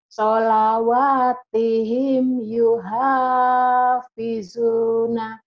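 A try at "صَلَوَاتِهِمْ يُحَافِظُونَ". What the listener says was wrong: Hanya kecil Bu, yuha. Solawatihim yuhafizuna. Solawatihim. Ibu belum bisa membedakan antara hadada sama ha gede sama kecil ya. Solawatihim yuhafizun.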